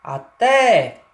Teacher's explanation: o A, a pronúncia dele é muito branda, é muito rápida, simples. Ó, até não tem destaque o A. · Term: vogal átona